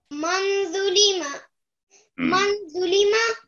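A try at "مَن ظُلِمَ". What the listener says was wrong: नहीं नहीं नहीं नहीं नून पर 2 सेकंड घुलना बेटा इख्फा होगा ना नून को थोड़ा सा 2 सेकंड करो थोड़ी सी लंबाई और करो बेटा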